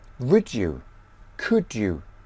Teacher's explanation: You also must learn about combination of English sounds in phrases such as would you, could you. D plus y gives j sound